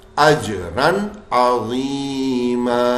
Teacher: ہم نون کی آواز نکالیں گے، غنہ بالکل نہیں کریں گے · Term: اظہار